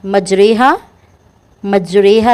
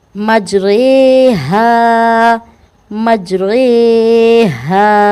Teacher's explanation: مجریہا، یہ جو رے ہے یہ امالہ والی رے ہے اور یہ قرآن پاک میں ایک ہی جگہ آئی ہے، سورۃ الہود میں، ٹھیک ہے، یعنی کہ کوے کی رے، مجریہا، مجریہا، رے کو رے پڑھنا ہے، ری نہیں پڑھنا، مجری نہیں پڑھنا